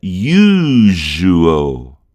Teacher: é aquele L dos antigos que a gente deixa a língua mais para cima, né? No meio da boca.